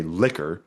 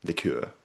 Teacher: We have the sort of initial stress there, but in Chaucer's time, which is the late 14th century, it was still that initial that sort of second syllable stress from French